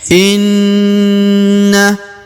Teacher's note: Perhatikan tanda yang bertasdid ya. Kalau bertasdid maka seperti huruf na ini ditahan dan ditekan lalu didengungkan 2 harokat. Inna, kemudian huruf na langsung masuk ke huruf lam yang berharokat sukun tasdid ini ya.